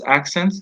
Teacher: Some words have silent letters, and here, for example, if we have the word accent, the plural is accents. The T is not there in pronunciation.